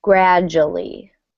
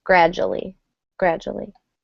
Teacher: the D and U kind of almost make a J sound